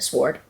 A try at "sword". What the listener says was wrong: you pronounce the W